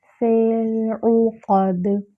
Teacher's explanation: ہے، باریک کرتے ہوئے لام ساکن سے ملائیں گے، فی العقد، عین پر ضمہ ہے، ہونٹوں کو مکمل گول کریں گے ، قاف پر فتحہ ہے،